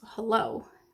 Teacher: That means that it only appears in syllables that are not stressed or that don't have the main strength in the word. So hello, the main stress is in the O